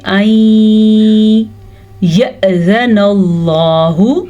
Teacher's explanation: حمزہ کے اوپر ساکن ہے تو یہاں پہ ایک جھٹکے کی کیفیت پیدا ہوگی اور لفظ اللہ کو پر پڑھا جائے گا کیونکہ لفظ اللہ سے پہلے زبر ہے.